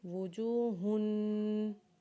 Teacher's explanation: ہا کے اوپر جب تنوین پڑھیں گے تو اس کے اوپر غنہ کریں گے، جیسے وجوہن